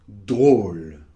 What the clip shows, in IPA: drol